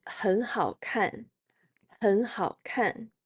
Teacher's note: Note that 很 changes to the second tone because 好 has the third tone.